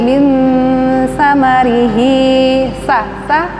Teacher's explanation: ikhfa, nun mati bertemu dengan sa, ujung lidah sedikit dikeluarkan, sa. Min samarihi, sa, ini ikhfa ausad.